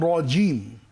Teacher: জিম তো জিব্বার মাঝখান তালুর সঙ্গে লাগিয়ে শক্ত করে পড়তে হয়